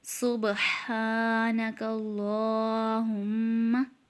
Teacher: با میں کلکلا کریں گے ہم